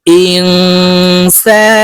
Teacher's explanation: নুন সাকিনের পরে ইকফার হরফ সিন আসছে তাই এই নুনকে নাকের ভিতরে লুকাইয়া গুন্নার সহিত পড়বো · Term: ইকফা গুন্না